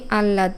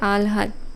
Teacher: করি আল্লাদ এটি ভুল উচ্চারণ আসলে সঠিক উচ্চারণটা হবে আলহাদ অর্থাৎ আগে ল এর উচ্চারণ তারপরে একটু হ এর উচ্চারণ